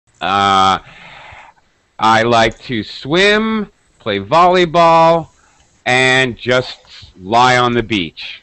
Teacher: We go high, we go high, we go low. This is English speaking intonation